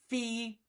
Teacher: f is known as a labio dental because my lip is touching my tooth